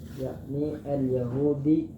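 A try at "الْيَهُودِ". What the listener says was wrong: yakni al-Yahudi kada mau dua aja, al-Yahudu atau al-Yahuda.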